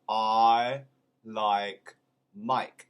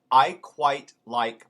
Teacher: in cockney it becomes almost like oi in boy and that is done with the open wide mouth